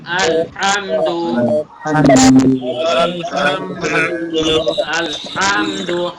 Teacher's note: আমি বলেছি আল হামদু হা গলার ভেতর থেকে হবে